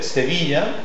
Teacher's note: C'est une consonne orale, fricative, alvéolaire et sourde.